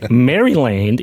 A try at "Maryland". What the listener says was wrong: Yeah, but you have a little too much t at the end of it. We don't pronounce our D's and T's properly in the U.S. Maryland.